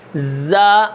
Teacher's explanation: زا، یہ سیٹی کی آواز ہے